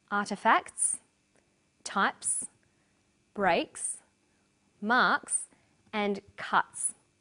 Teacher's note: The second way S is pronounced at the end of a word is s. It's pronounced this way after voiceless consonants. P, t, k, f and th.